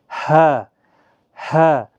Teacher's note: انتہائی حلق یعنی سینے کی طرف سے سانس چھوڑتے ہوئے ادا ہوتا ہے، کہیں پر سانس رکنا نہیں چاہیے، ہا، ہا، حمزہ، حمزہ، اس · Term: حروف حلقیہ